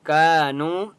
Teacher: كانوا الف مدہ ہے، کاف کو ایک الف کی مقدار کھینچ کر پڑھیں گے